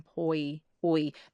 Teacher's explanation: So you'd get oi oi going quite rounded to pulled back.